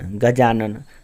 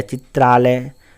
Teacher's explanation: अ क्या है, हर्ष स्वर है, और आ क्या है, दीर्घ स्वर है। दोनों मिलके क्या बन गया, दीर्घ स्वर आ बन गया।